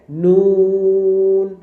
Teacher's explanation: ওকে, নুন বলতে হবে। আচ্ছা, নুন বলার সময় আপনার জিহ্বাটা কিন্তু সামনের দাঁতের উপরের দাঁতের মাড়িতে লেগে উচ্চারিত হবে